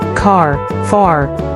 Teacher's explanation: la lettre R, dans l'anglais américain se prononce, en courbant la pointe de la langue vers le haut, mais ne doit pas toucher le toit de la bouche et rassurez-vous que ça ne touche pas sinon ça donnera un son proche mais pas authentique ni naturel. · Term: la lettre R américaine